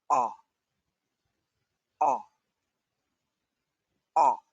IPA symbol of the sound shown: ɒː